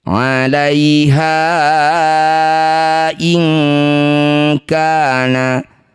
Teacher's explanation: Ha yang bertanda layar panjangkan 5 harokat. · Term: mad jaiz mumfasil